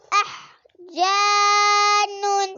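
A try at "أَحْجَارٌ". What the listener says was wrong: رن احجارن اس میں ہا کی آواز ٹھنڈی کرتے ہیں. احجارن احجارن رن را دو پیش احجارن نون نہیں رن را دو پیش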